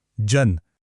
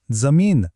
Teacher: हा जो य युक्त उच्चार आहे तो तालव्य आता हा कोणत्या प्रकारचा स्वर आहे सोप हा रस्व स्वर आहे